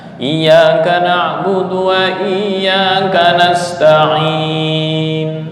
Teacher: Asalnya nasta'inu. Cuma nu dibaca sangat pelan sekali. Sampai orang yang di sekitar itu nggak kedengaran, seolah-olah anggapan orang sekitar itu waqaf. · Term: ismam dalam waqaf